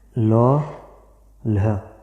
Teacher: जिनके उच्चारण में जिह्वा के पार्श्व भाग में बल पड़ता है, बल पड़ता है, या बगल वाले भाग पर, ठीक है, जीभ के बगल वाले भाग पर बल पड़ता है, उन्हें पार्श्विक ध्वनियाँ कहते हैं।